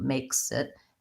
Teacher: I sort of link them makes it there's not a real clear break between those two